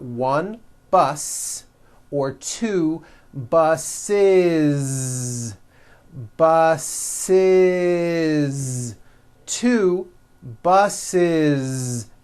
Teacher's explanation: The last sound you hear is that voiced Z.